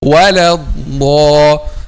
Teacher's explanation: الضاد is heavy without making any change of the shape of the lips or the mouth.